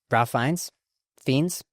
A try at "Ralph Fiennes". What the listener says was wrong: Rafe Fiennes, yes. Rafe. It's because it is spelt Ralph. fucking spelt Ralph, but he pronounces it Rafe.